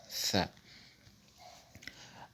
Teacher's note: Tha se prononce lorsque le bout de la langue, c'est-à-dire l'apex, est introduit entre les incisives en plus d'un souffle léger, comme le Th en anglais, le son Th en anglais.